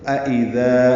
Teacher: تو اذا ذال نرمی سے ادا ہوگا، ذا الف مدہ ہے، دو حرکات لمبا ہوگا